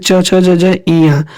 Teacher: उसके बाद आपका आता है च वर्ग, च फैमिली का, जैसे च छ ज ज इया, ये आपके तालु से बोले जाते हैं